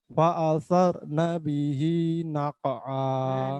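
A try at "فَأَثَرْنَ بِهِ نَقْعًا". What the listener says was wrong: Sudah bagus. Cuman fa'atharnya kurang tebal. Fa'atharuna.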